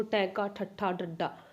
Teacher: ਹਾਂਜੀ, ਉਲਟ ਜੀਵੀ ਵਿਅੰਜਨ ਉਹ ਹੁੰਦੇ ਨੇ ਜਦੋਂ ਜਿਨ੍ਹਾਂ ਦੇ ਉਚਾਰਨ ਵੇਲੇ ਸਾਹ ਦੀ ਹਵਾ ਨੂੰ ਜਿਹੜੀ ਕਿ ਜੀਭ ਦੀ ਨੋਕ ਪੁੱਠੇ ਪਾਸਿਓਂ ਸਖਤ ਤਾਲੂ ਨਾਲ, ਜਿਵੇਂ ਕਿ ਆਪਣਾ ਆਹ ਸਖਤ ਤਾਲੂ ਹੈ, ਠੀਕ ਹੈ, ਆਹ ਆਪਣੀ ਜੀਭ ਹੈ, ਆਪਣੀ ਜੀਭ ਜਦੋਂ ਆਪਾਂ ਟੈਂਕਾ ਠੱਠਾ ਇਹ ਬੋਲਦੇ ਤਾਂ ਆਪਣੀ ਜੀਭ ਐ ਉਲਟ ਹੋ ਜਾਂਦੀ ਹੈ, ਤਾਂ ਇਹਦੇ ਨਾਲ ਜਿਹੜੇ ਕਿ ਇਹਦੇ ਨਾਲ ਜੁੜ ਕੇ ਜਿਹੜੇ ਕਿ ਹਵਾ ਨੂੰ ਇੱਥੋਂ ਜਿਹੜੀ ਹਵਾ ਆ ਰਹੀ ਉਹਨੂੰ ਰੋਕਦੀ ਹੈ, ਠੀਕ ਹੈ।